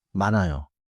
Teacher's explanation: in 많아요 the 히읗 is not pronounced before 아요 and 니은 links forward. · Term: 니은히읗 겹받침